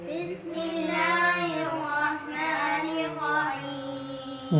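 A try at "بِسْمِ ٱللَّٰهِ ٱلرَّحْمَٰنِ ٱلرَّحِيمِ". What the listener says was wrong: بسم اللہ کو ناک میں نہیں پڑھیں۔ بسم اللہ الرحمن الرحیم۔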